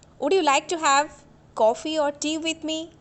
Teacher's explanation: So here I am using falling tone, because for giving suggestions we should use falling tone